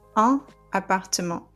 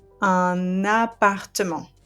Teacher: the liaison will allow me to pronounce the last consonant of that article and link it to the noun. So it's going to become un appartement.